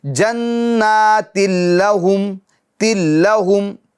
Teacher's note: تنوین کی جو نون ساکن ہے اس کی آواز نہیں آئے گی